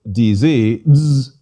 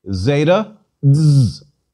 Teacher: zeta buzzes more in greek because we should insert a d sound as well tactically z d as in mazda but it's a lot easier